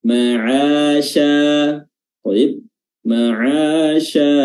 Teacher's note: makhraj huruf shin yang tepat adalah pertengahan lidah. Ini wasatul lisan diangkat dan bertemu dengan langit-langit atas bagian tengah. Dan membuat aliran udara itu menyebar ke seluruh permukaan lidah atau mulut, sehingga dia memiliki sifat namanya tafasyi.